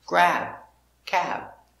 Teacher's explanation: Again, this is a stop B. We don't say b. It's just stop. Grab. Make the position and stop.